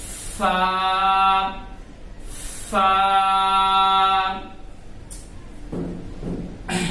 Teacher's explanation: فا کا مخرج نیچے کے ہونٹ کا تری والا حصہ اور ثنایا علیہ کا کنارہ. یعنی نیچے کے جو ہمارے ہونٹ ہے، یہ جو ہونٹ ہے ہمارا نیچے والا حصہ، اس میں دو حصے ہوتے ہیں.